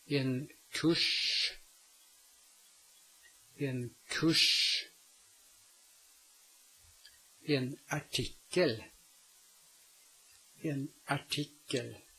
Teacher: the R is not pronounced, and the following consonant is pronounced with the tongue pulled back to the position where the R would have been spoken if it had been spoken.